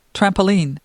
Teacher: you'll put the stress on the second part